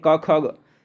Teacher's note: क ख ये जो आपकी कंठ ध्वनियाँ हैं।